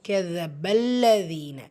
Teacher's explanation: யா மத்தா 2 ஹரக்கத் அளவு நீட்டம் கொடுத்து ஓதணும்